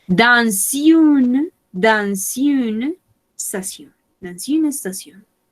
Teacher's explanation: Generalmente la S no se pronuncia, pero la regla nos dice que cuando comience acá la siguiente palabra con una vocal, vamos a hacer un puentecito y sí vamos a pronunciar la S